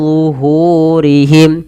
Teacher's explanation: rnya tebal karena dia ro tafhim ro yang dibaca dengan tebal